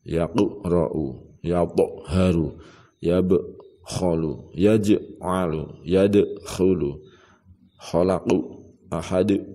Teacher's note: namanya bacaan qalqalah kubra. Jadi dibaca memantul.